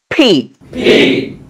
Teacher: এটা উচ্চারণ করতে হয় দুই ঠোঁট চাপ দিয়ে ধরে ঠাস করে